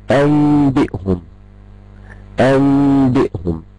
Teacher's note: الخطوة التالتة هي ان انا حابة اصدر غنة بمقدار حركتين اثناء ما انا بخفي الميم. اثناء ما انا بخفي الميم حابة اؤدي الغنة بمقدار حركتين.